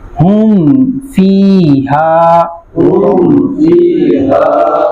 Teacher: فا اور میم دونوں ہونٹوں سے پڑھے جاتے ہیں، یہاں زیادہ دھیان رکھنا ہے تاکہ میم واضح ادا ہو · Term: اظہار شفوی